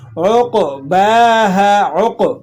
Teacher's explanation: یہاں پر آپ نے قلقلہ ادا کرنا ہے، اسے قلقلہ صغیرہ کہا جاتا ہے، یعنی چھوٹا قلقلہ. حروف قلقلہ پر اگر جزم لگی ہو تو وہاں جو قلقلہ ادا ہوتا ہے اسے قلقلہ صغیرہ کہا جاتا ہے.